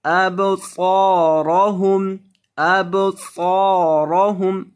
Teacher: صاد کو اور را دونوں کو موٹا کریں گے اور صاد کو لمبا کریں گے. اس کے بعد الف ہے.